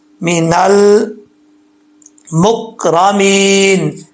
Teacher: جب لام کے مخرج میں زبان جائے تو وہیں رک جائے، کلکلا نہیں ہے، لام میں کلکلا نہیں کرنا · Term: قلقلہ